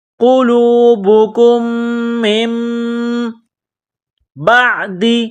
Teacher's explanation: یہاں دو میم ایک ساتھ ہے، پہلا میم ساکن ہے، دوسرا میم مشدد ہے، تو یہاں آواز ناک میں چھپانی ہے، غنہ کرنا ہے۔ کاف کو اس دوسرے میم کے ساتھ ملانا ہے، پلس کرنا ہے، میم کو اس چھوٹی میم کے ساتھ ملانا ہے۔